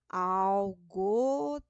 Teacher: a tônica ficou na última sílaba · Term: oxítona